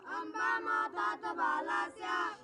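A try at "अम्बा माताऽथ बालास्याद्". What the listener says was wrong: स्याद बोल देना है, स्याद दा को ले लेना इधर, और फिर वासुरार्यस्तु मारिसा इधर वा को इधर ले लेना, ठीक है भैया।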